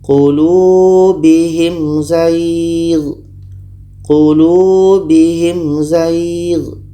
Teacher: Mim jelas, za jelas, dan tidak ada dengung. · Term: izhar syafawi